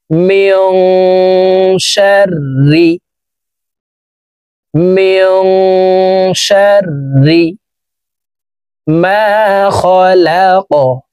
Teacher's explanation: এখানে ইকফা গুন্না, নুন সাকিনের পর ইকফার হরফ শিন আসছে, এই কারণে এই নুন সাকিনকে নাকের ভিতরে লুকাইয়া গুন্নার সহিত পড়তে হবে